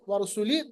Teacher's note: را کو پر پڑھیں گے کیونکہ را پہ پیش ہے